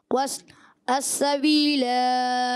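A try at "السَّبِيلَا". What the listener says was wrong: अस्सबीला वस्ल में नहीं खींचेंगे। अस्सबीला रुक जाए बच्चे।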